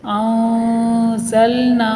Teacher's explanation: انزلنا، یہاں پر نون ساکن کا اخفاء ہوگا، آواز ناک سے چھپتی ہوئی آئے گی، ایک الف کے برابر رک کر اخفاء کریں گے۔